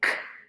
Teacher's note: When you say k, you can feel the back of your tongue touching your soft palate. And that tells us that the place of articulation of k is velar.